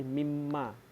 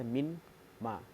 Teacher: Asimilasi kompli yaitu apabila pengaruh penyeluruh seperti kata ma ditambah min menjadi mimma, di mana konsonan n melebur menjadi m, menjadi mimma, dan tadinya min ma. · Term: idgham